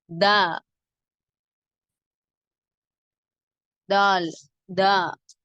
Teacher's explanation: நாவின் நுனி பகுதி மேல் நடுப்பற்களின் வேரை அழுத்தமாக தொட்டு விலகும் போது உண்டாகிறது.